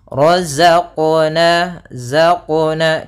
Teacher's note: Nah, dia ada sifat yang namanya sifat jahar, dan dia sifat rokhawah. Ya, za itu rokhawah, artinya suaranya mengalir tapi nafasnya tertahan.